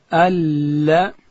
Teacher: لام ادا کیږي چې کله د ژبې غاړه لوړې وري ته وروړو دلته حرف لام ادا کیږي.